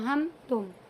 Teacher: जैसे उर्दू में हम और तुम की मीम होती है ना, हम तुम, बिल्कुल मीम को ज़ाहिर करके इस तरह से नाक पाक में ले जाकर नहीं पढ़ेंगे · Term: इजहार शफवी